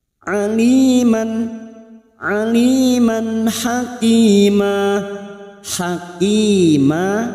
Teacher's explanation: fathah tanwin yang bertemu ha dibaca jelas tanpa mendengung